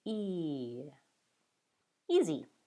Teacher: So vowel E does not just sound like E, but rather E, starting with the E and sliding to A. Start with a higher pitch and slide to a lower pitch.